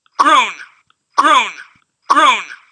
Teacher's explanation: here i've taken the exact same recording and doubled the f-zero · It's higher pitched, yet the characteristics of the segments in here, gr, o, and n, stays exactly the same. The filter properties are the same.